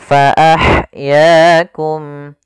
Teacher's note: ha sifatnya ada sifat hamas, alirkan nafas kita.